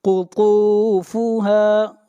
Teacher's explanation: طوا کو موٹا پڑھیں گے اور طوا کو کھینچ کر پڑھیں گے 1 الف کے برابر